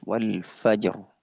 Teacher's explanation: jimnya sukun rnya waqaf wal fajr maka rnya dibaca tebal